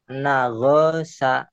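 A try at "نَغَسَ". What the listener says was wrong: Bukan go. Ini nggak ada titiknya.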